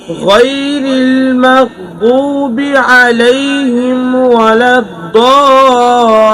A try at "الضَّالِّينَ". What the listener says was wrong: ضال এনে গুণ হয়ে গেছে ضالين